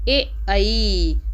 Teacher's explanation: कंठ तालु में ए आई यानी कि गले और जीभ की सहायता से बोला जा रहा है,